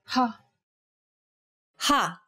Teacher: this sound involves a forceful expulsion of air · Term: aspiration